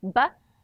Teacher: and that is are you vowel it's the up sound uh it's in the back of your mouth and your mouth is fully open just like an all of your bowel sounds your mouth is